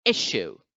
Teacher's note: the first syllable is the one which is accented